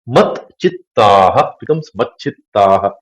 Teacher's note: The takara, when it comes in front, becomes chakara. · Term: chutva sandhi